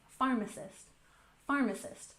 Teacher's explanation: pharmacist with emphasis on the first syllable